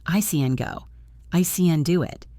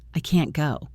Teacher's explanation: Negative, I can't go. The positive one is fast and weak. The negative one is longer and stronger.